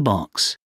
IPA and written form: bɒks (box)